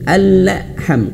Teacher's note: Nah, jadi caranya alham melepaskan lidahnya dari makhraj lam ini berbarengan mengucapkan huruf ha